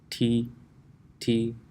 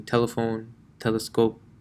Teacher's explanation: your tongue when pronouncing T actually never touches the teeth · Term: English T